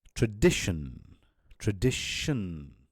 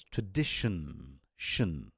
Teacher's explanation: pronouncing the words that end with tion as a sh sound